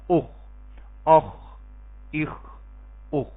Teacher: ادنا حلق یعنی حلق کے ابتدائی حصے سے جہاں سے زبان شروع ہوتی ہے وہاں سے یہ دونوں حروف ادا ہوتے ہیں